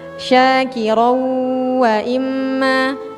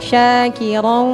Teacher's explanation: tanwin bertemu dengan wau itu suaranya dari hidung ya, jangan dari mulut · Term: ghunah